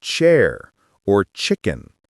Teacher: The tongue position is almost the same, but for ch, you block the air for a moment and then release it suddenly. That small burst of air makes the ch sound sharper than sh.